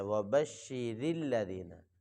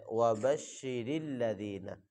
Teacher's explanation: وَبَشِّرِ الَّذِينَ، وَبَشِّرِ الَّذِينَ نہیں پڑھنا، راہ کو موٹا نہیں کرنا، وہ غلط ہو جائے گا، اس کو بری کر کے پڑھنا ہے وَبَشِّرِ الَّذِينَ۔